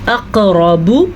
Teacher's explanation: قاف پہ قلقلہ کرنا ہے، را کو ضرور پڑھنا ہے جبکہ باپشبو اس سے زیادہ لمبا نہیں کرنا.